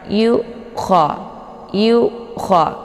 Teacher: Hamzah ini letaknya di tenggorokan bagian bawah jadi bacaannya tipis dan jelas cara bacanya ditekannya yuk ko jadi bukan ini di sini jangan